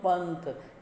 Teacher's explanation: तो यहाँ पर इसका उच्चारण न के समान होगा और बोलेंगे तो पंथ, न की आवाज़ आती है